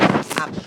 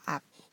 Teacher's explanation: 예를 들어서 앞이라는 앞뒤 할 때 이 앞 말이에요. 앞을 발음하면 앞, 음절 끝에서 피읍이 비읍 소리로 바뀌어서 소리가 나죠. 앞. 이런 것이 교체예요.